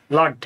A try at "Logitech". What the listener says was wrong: Logitech, you're close. Not Logtech.